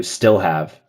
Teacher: Do have an accent. I'm also not hearing the dark L in still have.